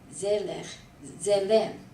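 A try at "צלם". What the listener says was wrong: Selah. Selah. It sounds like you're saying a Z, it's a TS, like pizza, Zella. Pizza, say pizza.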